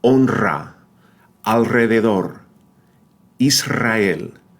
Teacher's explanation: It's also pronounced as the rolled R when it appears after the consonants N, L, and S, alveolar consonants.